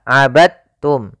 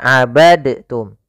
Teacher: Meskipun Dal termasuk huruf Qalqalah karena dia memiliki makhraj yang sama dengan Ta Maka diidghamkan dalnya kepada huruf ta